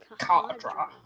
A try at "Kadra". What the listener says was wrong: No, it's Kadra. You don't pronounce the H as much.